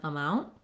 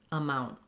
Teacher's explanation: if I leave the T off, I just need to make that N very short